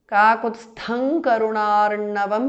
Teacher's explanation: Kakutsthang Karunarnavam because of Sandhi. Anuswara changes to Nga, the nasal of Kavarga.